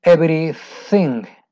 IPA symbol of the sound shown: θ